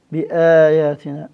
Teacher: مد البدل يعني تود الهمزة من رأسها مجبودة، كيف الآيات اللي هم تكررة، آياتنا، تعود الهمزة من رأسها مجبودة، بآياتنا، هذه الهمزة تمتد أربع حركات